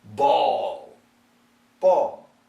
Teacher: the dark L is tucked in tight